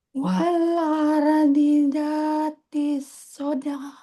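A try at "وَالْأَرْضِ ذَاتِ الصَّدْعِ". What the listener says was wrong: wal ar serak ya. Wal arnya kurang jelas Bu. D-nya pendek. Ardidha, ardidha.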